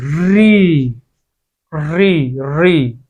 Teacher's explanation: जैसे मूर्धन्य स्वर एक ही है, री री री। इसमें हमारी जिह्वा जो है वो मूर्धा को स्पर्श करती है। री ये केवल एक ही स्वर है, यानी कि मूर्धा, यानी कि यहां से जो है वो हमारा री मूर्धा से उत्पन्न होता है।